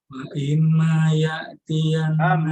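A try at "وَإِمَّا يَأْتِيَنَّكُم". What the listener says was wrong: Mim ditekan, agak ditekan. Kan mim itu lebih lama tasydid ya.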